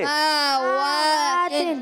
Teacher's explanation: اب سین کا زبر نہیں کھینچیں گے مگر میم پر کھڑا زبر، واو پر کھڑا زبر، ان دونوں کو کھینچیں گے